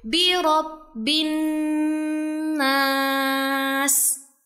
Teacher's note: huruf nun bertasydid yang dibaca dengan penekanan 2-3 harokat karena ada gunnah. Jadi bacanya ditahan dulu ya.